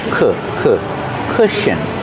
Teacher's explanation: The first vowel makes a short uh sound like book and look together.